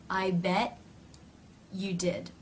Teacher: even though we're not releasing to give the complete full t the idea is still there by the tongue going into position cutting off